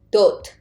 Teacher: first consonant is d but last sound final consonant d will be t so it becomes dot it's not dodd magnifier you see good